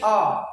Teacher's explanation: मध्य स्वर जैसे कि अ मतलब बीच वाला प्रयोग हो रहा है